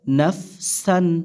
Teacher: নুন ফা জবর নাফ, সিন দুই জবর সান, নাফ সান, নাফ সান। তানভিনের পরে হামজা থাকার কারণে এখানে স্পষ্ট করতে হবে, কোনো প্রকার গুণা করা যাবে না।